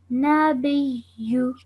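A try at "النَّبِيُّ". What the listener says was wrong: Yeah, so it's an-nabiyyu over here because you're joining the alif.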